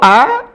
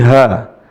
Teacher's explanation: Nah, tempat keluarnya huruf ini sama ya ditenggorokan.